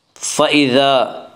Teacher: الف مدہ کو ایک الف کے برابر کھینچ کر پڑھیں گے